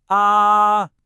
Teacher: It's high and it's flat. Just imagine you're holding a single high musical note. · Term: first tone